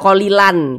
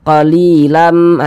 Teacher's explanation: dia digenahkan atau didengungkan jadi suaranya itu kita tahan kita panjangkan sejenak qolilamah di bagian lamnya itu kita tahan kita panjangkan sejenakilam minhum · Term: ghunah